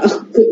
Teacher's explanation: The Akh sound is called Jihvamuliya. It is produced from the base of the tongue.